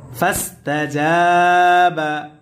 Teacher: জবরের পরে কালি আলিফ মাদের হরফ, আর মাদের হরফ হইলে এক আলিফ টানিয়া পড়িতে হয়, ইহাকে মাদ্দে তবাই বলে।